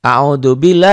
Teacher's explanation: dibaca tipis Kenapa dibaca tarqiq tipis karena sebelum lafadz Allah ada huruf yang berbaris kasrah baris dibawah